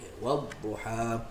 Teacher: untuk elak qalqalahkan dia, maka kita lamakan sikit kedudukan dad di tempat makhraj dia